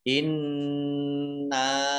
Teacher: nun tasdid dibaca gunnah atau mendengung ditahan 2 harokat